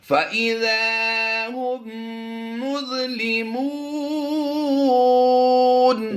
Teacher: یہ میم ساکن کے بعد جب دوسری میم آتی ہے تو وہ مشدد پڑھی جاتی ہے، اور اس میم کو ہم اس میم میں ضم کر دیتے ہیں، تو یہ میم مشدد والا غنہ یعنی غنہ آنی کی آواز دیں گے یہاں پر۔